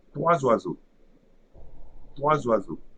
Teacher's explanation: So here 3 ends with a silent S, so it will create an abstract Z at the beginning of the second word. And the second word, first syllable, is OI. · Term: liaison